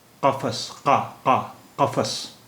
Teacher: The first sound of qa is a glottal sound. It is a glottal ka.